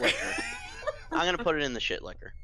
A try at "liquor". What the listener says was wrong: I know you're saying it like Liquor, but it sounds like you're saying Licker.